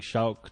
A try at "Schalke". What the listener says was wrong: It's pronounced Schalke the same way it's pronounced Porsche. You have to finish it.